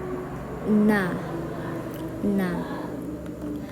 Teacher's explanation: Huruf nun ini makhrijulnya yaitu di bagian alisan juga yaitu ujung lidah